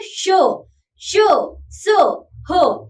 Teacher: इन व्यंजनों के उच्चारण में वायु तेज गति से मुंह के भागों से रगड़ खाती हुई बाहर निकलती है, जिससे ऊष्मा यानी गर्मी पैदा होती है, इसलिए इन व्यंजनों को ऊष्म व्यंजन कहते हैं।